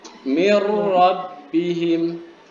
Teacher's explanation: Lam ra. Cara bacanya gimana? Dengan tidak dengung. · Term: bila gunnah